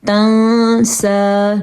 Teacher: نون کو تھوڑا چھپا کے پڑھیں گے کیونکہ نون کے بعد سین آیا ہے اور سین جو ہے وہ حروف ہلکی میں سے بھی نہیں ہے.